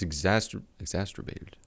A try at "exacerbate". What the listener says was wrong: Hey, there's no T. Eggs, not You say eggs taster. What did you say?